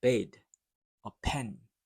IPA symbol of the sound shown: ɛ